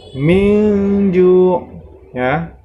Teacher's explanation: nun sukun nya dibaca samar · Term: ikhfa